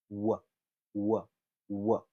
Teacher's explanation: There is contact. But with an approximant, there is no contact. W, w, w. There's still that space between the lips.